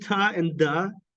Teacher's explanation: these are alveolar plosives